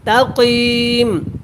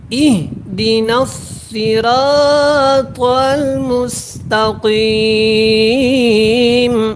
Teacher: یہاں پہ سین کو آپ نے سختی کے ساتھ اور باریک پڑھنا ہے، کیونکہ یہاں پہ صاد کو تو آپ نے موٹا پڑھا تھا، لیکن سین اور صاد کا فرق رکھنا ہے۔